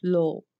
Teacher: Pashto speakers don't pronounce V in the word final position. For example, love, that will pronounce low.